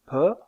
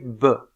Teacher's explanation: des occlusives le voile du palais est relevé bien sûr et dans le cas de P la consonne est sourde c'est-à-dire que les cordes vocales ne vibrent pas